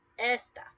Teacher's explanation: Esta, without an accent mark, you stress the first vowel, which is E. So it's esta, that first syllable.